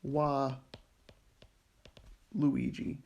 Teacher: Well, maybe we don't like having two liquids right next to each other, right? So we wind up getting an epenthetic vowel showing up in here to break up this liquid cluster